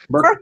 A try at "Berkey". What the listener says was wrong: there's no L in there. It's Berkey.